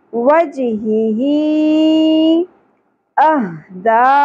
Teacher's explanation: اب کیونکہ مد اصلی کھڑی زیر کے بعد حمزہ آ گیا نیکسٹ ورڈ کے اندر، اگلے کلمہ کے اندر، تو ہم کیا کریں گے، یہاں پہ مد منفصل چھوٹی مد 3 الف کے برابر